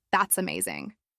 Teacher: your pitch rises on amazing,